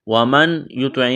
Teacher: ومن، یہاں دیکھیں نون ساکن کے بعد یا ہے، یہاں پر ادغام کریں گے، یعنی نون کا یا میں ادغام کرنا ہے، اس نون کو نہیں پڑھیں گے